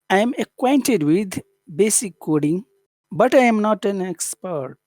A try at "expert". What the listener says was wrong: Expert or expert, which one? Yeah, don't add too much tone to that. You can if you want, but that doesn't sound very natural to do that.